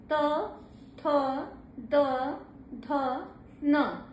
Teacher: दंत यानी आपका दांत जो है वो आपस में स्पर्श करता हुआ प्रतीत होगा और जो जीभ है वो दांत के ऊपर भाग को स्पर्श करेगी। त थ द ध न जब आप बोलेंगे तो जीभ ऊपर वाले दांत के भाग को स्पर्श करती है। इसलिए स्पर्श व्यंजन ये दंत कहा गया है। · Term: दंत स्थान